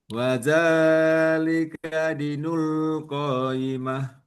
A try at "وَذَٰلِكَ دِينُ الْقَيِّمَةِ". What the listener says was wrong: ianya adalah mat, maka harus panjang. Dinul dinul qayyimah.